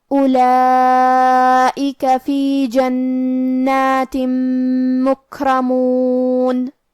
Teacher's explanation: کیونکہ را پہ زبر ہے، لہذا ہمیں را کو موٹی آواز میں پڑھنا ہے۔ آخری میں ہم یہ کلمہ پہ رکیں گے تو نون پہ جزم سے رکیں گے، لہذا ہمیں نون کو ظاہر کرنا ہے